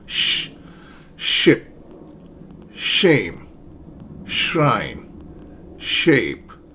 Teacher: So your tongue is near the hard pallet and then air flows out just like you're trying to quiet someone down